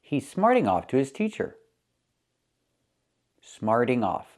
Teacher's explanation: the T changes to a fast D.